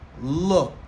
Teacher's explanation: ED li placé après le son K. Le son K, c'est une consonne non sonore. ED, ici, la bien son T. Ça devient looked.